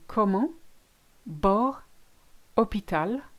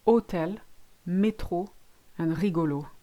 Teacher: So you've got an open O as in comment, bord, hôpital, and you've got a closed one in hôtel, métro, and rigolo.